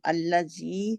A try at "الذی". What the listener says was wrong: زی نہیں ہے، اللہ زی نہیں ہے، زا ہے کہ زال ہے، زال ہے. اللہ زی، اپنی زبان کی نوک جو ہے اوپر والے دو دانتوں کے کنارے کے نیچے رکھ دیں وہاں پہ.